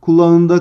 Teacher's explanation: Arkadaşlar kelimenin kökü kulaktır. K sesinin yumuşadığını görüyoruz. O yüzden burada da ünsüz yumuşaması vardır.